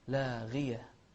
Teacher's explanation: غين مفخمة لكنها مكسورة فتكون في أدنى مراتبها، أدنى مراتب التفخيم